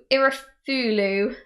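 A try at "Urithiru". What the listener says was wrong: It's not Cthulhu. It's Irithiru.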